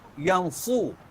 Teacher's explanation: Sebab kenapa pipi kembung? Kerana berlakunya kompres. Itu dipanggil itbaq.